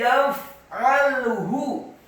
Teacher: Wa may yaf'alhu, kata yaf'alhu, ya-nya dibaca tipis fathah satu harokat, kemudian fa-nya dibaca sukun dan tidak boleh dikolkolakan · fa-nya dibaca sukun dan tidak boleh dikolkolakan. Yaf'alhu tidak, tapi yaf'alhu.